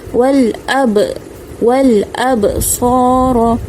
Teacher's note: huruf ba baris mati baris sukun, kita baca dengan bacaan qalqalah, ada lantunan.